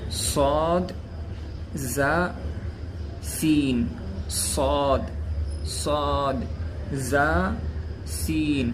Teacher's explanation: یہ حروف زبان کی نوک سامنے، اوپر، نیچے دو دانتوں کے اندرونی کنارے سے ادا ہوتے ہیں